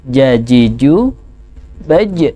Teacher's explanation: ketika mengeluarkan huruf jim tidak ada nafas yang keluar. Jajiju baj, tengah lidah tempelkan ke langit-langit mulut, ya.